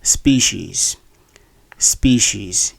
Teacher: in this word the stress force on the first syllable and the word has two long vowels which is an uncommon situation